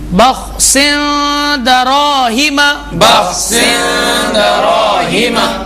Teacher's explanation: اب یہ جو لفظ دال ہے جو حروف اخفا میں سے ہے، حرف دال جو حروف اخفا میں سے ہے، اس کی دوسری مثال پڑھیے، بخس دراہم، بخس دراہم، اس میں خا میں قلقلہ نہ ہو